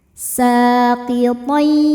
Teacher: ada idgham bi gunnah karena ada tanwin fathah menghadapi huruf ya. Cara bacanya tanwinnya masuk ke ya, kemudian tahan dengungkan.